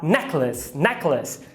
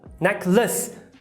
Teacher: E por que lace vira o schwa, necklace? Porque está em posição átona, ou seja, fraca. Então, se você estiver falando uma vogal non-stressed, ou seja, não acentuada, fraca, tem uma grande chance de você estar falando um schwa.